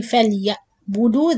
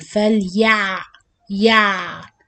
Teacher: يَعْبُدُ the عين not with cutting sound, it has little running, the same time it's not Hamza. When I say فَلْيَعْبُدُ, this is Hamza sound and not عين.